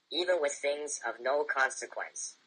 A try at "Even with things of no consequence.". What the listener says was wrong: Put a little more emphasis on no. More emphasis, man. Hold it for like 2 seconds. Even with things of no consequence.